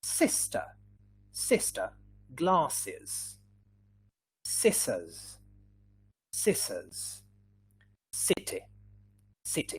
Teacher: we have some little uh friction here between the tongues and the teeth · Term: voiceless